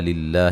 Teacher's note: قوا, قاف کو موٹا ادا کریں گے, مد اصلی ہے, میہ مدہ ہے. للہ لفظ اللہ کو باریک پڑھیں گے, اس سے پہلے زیر ہے